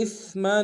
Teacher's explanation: میم کے اوپر تنوین غنہ کریں گے